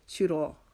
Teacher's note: سرا، را کو موٹا کریں گے، اور یہاں پر جو الف آ رہا ہے اس سے پہلے چونکہ زبر ہے تو یہاں پر الف مدہ کا قاعدہ لگے گا، اس کو ہم ایک الف کی مقدار لمبا کریں گے